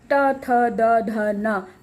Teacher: हाँ, दांतों के पीछे वाले भाग को जीभ टच हो रही है, तब त बोल रहे हैं ना। त थ द ध न, पांचों ही वर्ण दांतों के पीछे जीभ टच होती है, यानी कि दांतों को छूकर आवाज आ रही है।